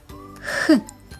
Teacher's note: горло працює чи мовчить Мовчить тому звук х глухий Давай з тобою уявімо що ми гріємо руки х саме це